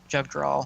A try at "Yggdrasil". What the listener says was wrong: Yggdrasil. I'm pretty sure the J is pronounced as a Y.